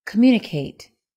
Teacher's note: The word stress is on the second syllable.